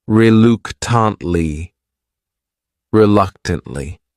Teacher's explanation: This word has four syllables and the stress is on that second syllable. That third syllable also has that schwah reluctantly reluctantly.